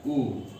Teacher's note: उ अपने 18 भेदों सहित जो है वह ओष्ठ से उच्चरित होगा